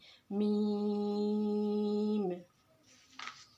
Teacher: लाम, मीम, मीम की मिकदार 3 अलिफ के बराबर है और इसका मखरज है, दोनों होठों के बाहर वाले तर हिस्से से ये मीम अदा होगा, इसकी आवाज़ नाक में जाएगी